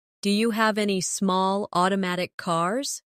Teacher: Do you becomes dia.